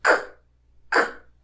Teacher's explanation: E a diferença entre elas é que no caso de K, não há vibração da corda vocal, ou seja, é uma consoante surda ou menos sonora. E podemos perceber essa sutil diferença encostando a mão aqui na garganta.